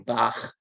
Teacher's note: it's a sound made in the back of the throat with some friction